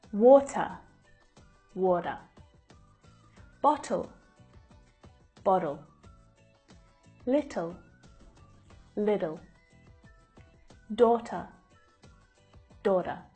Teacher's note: letter T is between two vowel sounds like in these words the flap T is a flatter sound that actually sounds more like a d